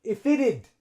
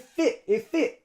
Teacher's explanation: the F links on to the I